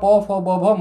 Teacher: और बिल्कुल बाहर की ओर आएंगे तो होठ है, तो होठ से उच्चारण होगा प फ ब भ म का